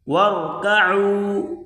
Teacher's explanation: واو کو را کے ساتھ ملا کر پڑھیں گے، را کو موٹا کر کے پڑھیں